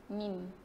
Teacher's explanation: Tertutup ke atau macam mana? Mim pula sebutan dia adalah kita sebut tu sentuh di antara bibir atas dan bibir bawah ni dengan sempurna.